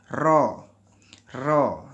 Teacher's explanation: Makhrajnya di ujung lidah sedikit di bawah makhraj nun.